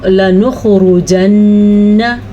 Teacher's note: لَنَخْرُجَنَّ، را کو پر پڑھیں گے، اور یاد رکھیں نون کے اوپر ہمیشہ جب بھی شد آ جائے گی تو نون پہ غنہ ہوگا، نون پہ شد آ جائے گی یا میم پہ شد آ جائے گی، دونوں صورتوں میں غنہ ہوگا